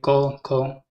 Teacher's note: अघोष क्या होंगे, क्योंकि इनके उच्चारण में क्या है कि कंपन नहीं हो रहा